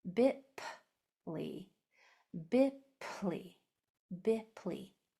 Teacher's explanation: make sure it's only air. No vocal cords are allowed to be used. Okay, no voice comes out at all on a P. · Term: P sound